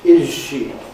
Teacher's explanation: we change the Z to je in things like bus shelter and is she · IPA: /ˋɪʒ ʃi/